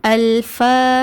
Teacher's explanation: பதஹாவை தொடர்ந்து அலிஃப் மத்தா வந்திருக்கு அதனால இரண்டு ஹரக்கத் நீட்டி ஓதுங்க